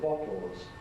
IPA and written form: ˈbɒtl̩z (bottles)